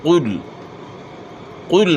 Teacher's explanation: اپ نے موٹا پڑھنا ہے پیش کو معروف پڑھنا ہے یعنی پیش کی ادائیگی میں ہونٹ گول ہوتے ہیں